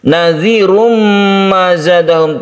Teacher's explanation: Idgham artinya masuk ke huruf mim sehingga timbullah tasydid di sini. Karena bertasydid mim itu menjadi gunnah cara membacanya. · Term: idgham bi gunna